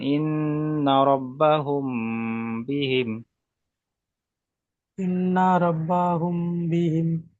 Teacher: মিম সাকিনের পরে বা এসেছে, তাই মিম সাকিনকে একালিপ পরিমাণ গুণনা করে পড়তে হবে। একে বলা এক হয় আলিফ পরিমাণ ইখফায়ে গুণনা করে পড়তে হয়। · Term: ইখফায়ে সাফাবি